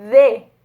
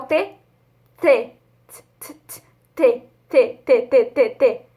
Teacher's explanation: A maior diferença é que o D faz a nossa garganta tremer e o T não. Antes de começar a fazer o D, eu já tô tremendo minha garganta.